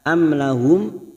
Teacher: mim sukun kita baca jelas karena bertemu lam idhar safawi